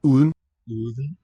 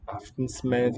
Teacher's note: it's like an L because it's a weakened D. It's gesturing towards the th sound. Aftensmed, yeah, I would even lose that in the middle syllable.